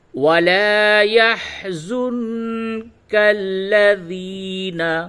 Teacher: یا ساکن سے قبل زیر ہے، یہ یا مدہ ہے، اس کو تھوڑا کھینچ کر کے پڑھیے